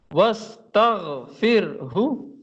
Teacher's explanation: جی تغ غین کے ساتھ، یہ غین موٹا بھی جی ہوگا، خیال رکھیں